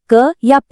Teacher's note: हवा कुछ पल के लिए रुकती है और फिर एकदम से बाहर निकलती है। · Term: स्पर्श